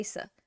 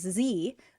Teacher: No vibration happening in your throat versus z. Oh, I feel vibration.